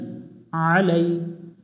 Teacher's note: আইন জবর আ, লাম ইয়া জবর লাই, আলাই। এখানে আইন অক্ষরটা হলকের মধ্য থেকে, অর্থাৎ গলার মাঝখান থেকে একটু চেপে পড়তে হবে।